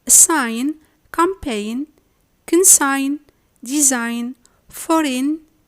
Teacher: If the G is followed by a nasal sound, m or n, it's then muted and reduced to a silent sound